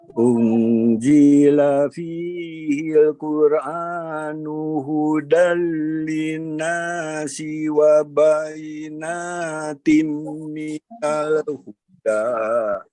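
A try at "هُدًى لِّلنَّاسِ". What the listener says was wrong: Nah, sekarang dari linnas. Linnasnya ditahan dulu ya, Prof ya, lebih lama. Hudal linnas.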